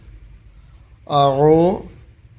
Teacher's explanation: হামজা হলকের শুরু থেকে উচ্চারিত হবে